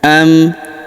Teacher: Huruf lu kita panjangkan dua harakat karena wau sukun di depannya.